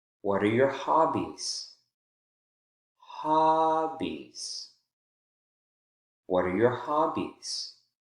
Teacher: one because we have two syllables in that focus word hobbies the first syllable is the strongest and that gives us an opportunity in a two-syllable word especially where the last syllable is not stressed to really emphasize that falling intonation